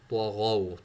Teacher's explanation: طوا این غین موٹا پڑھیں گے. واو یہاں پر لین ہے.